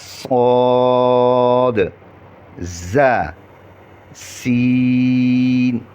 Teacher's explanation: زبان کی نوک جب ثنایا سفلا کی کنارے سے ٹکرانے کے ساتھ ثنایا علیا سے بھی لگے، یعنی دونوں سے اوپر نیچے دونوں سے لگے تو یہ حروف ادا ہوتے ہیں.